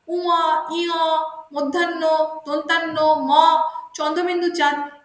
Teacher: এগুলি উচ্চারণের সময় শ্বাসবায়ু নাসিকার ভিতর দিয়ে নির্গত হয় বলে এদেরকে নাসিক্য ধ্বনি বলা হয়।